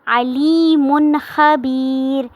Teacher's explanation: آواز کو ناک میں نہیں لے کے جانا، غنہ نہیں کرنا بلکہ اظہار کرنا ہے، ظاہر کر کے پڑھنا ہے۔